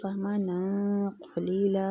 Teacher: نون پہ بھی اخفا کریں گے تنوین کا، اور قاف کے مخرج کے قریب جا کے کریں گے تاکہ پر ہو۔